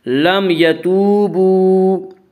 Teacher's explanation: لم یتوبوا، وا مدہ وہ واو جو ساکن ہو، اس سے پہلے پیش ہو، وا مدہ کو 1 الف کے برابر کھینچ کر پڑھیں گے